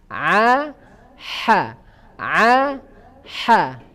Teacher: Yang kedua yaitu wasatul halq, ya, tenggorokan bagian tengah, yaitu tempat keluarnya huruf apa? Ain dengan ha.